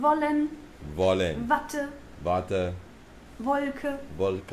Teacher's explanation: The W, though, is actually the English V sound. Like in wollen, Watte, Wolke.